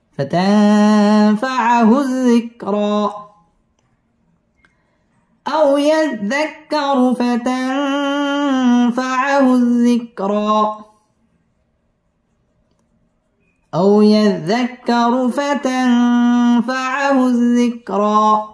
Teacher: ফাতাং ইকফা এখানে গুন্নাহ করে পড়তে হবে